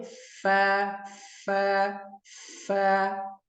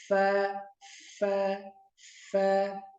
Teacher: Kemudian makhraj fa, min batni syafah, pada tubuhnya bibir, dagingnya, bagian dalam, bagian dalam bibir yang bawah, ma atrafi, sisi sanaya ulya, dengan sisi gigi seri atas. Jadi gigi seri atas nempel di bibir dalam, nih, bibir dalam yang bawah.